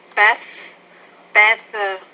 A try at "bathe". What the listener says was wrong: So with the second sound there, it's more A, it's a long vowel. Bathe. You even have to change the pronunciation of the word when you go from a noun to a verb. So it's bath, bathe.